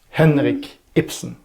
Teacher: It makes that funny point where Ibsen would use that trochaic a lot, and Henrik Ibsen, his two names are trochaic · the trochaic, that's the stressed and then unstressed